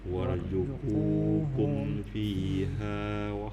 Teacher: Karena situ ku-nya ada waw, maka panjangnya 2 harokat.